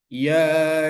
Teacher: as Sya kemudian mengucapkan huruf ya yaitu menggerakkan anak lidah e menggerakkan bagian tengah lidah seolah-olah juga menyentuh bagian langit-langit bagian atas